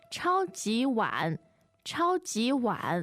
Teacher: Now, the word wan, third tone, literally means bowl, as in rice bowl.